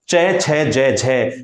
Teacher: चय छय जय झय, ये स्पर्श और संघर्ष दोनों के गुण इस ध्वनि में विद्यमान होने से इन्हें हम स्पर्श संघर्षी कहेंगे